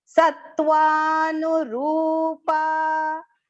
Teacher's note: And the ru here in the middle of the word is long pronunciation. Okay, ra with a long u vowel sound.